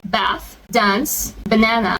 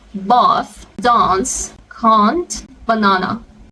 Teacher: in American, the vowel A is much shorter than in British.